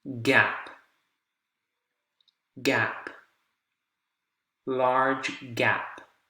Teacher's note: Now you're getting aspiration at the end, again, because of the P